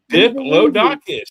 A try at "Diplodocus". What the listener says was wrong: Because it sounds like you were saying DIC.